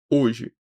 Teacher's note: hoje é completamente oral, não tem nasalização nenhuma